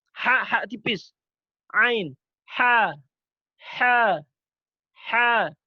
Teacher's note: Apa yang keluar dari tenggorokan bagian tengah? Huruf ha tipis, ha dan ain.